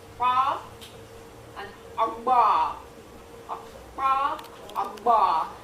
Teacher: Make sure you're feeling a K and a P at the same time.